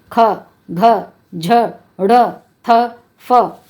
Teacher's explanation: उच्चारित करते समय वायु अधिक निकलती है।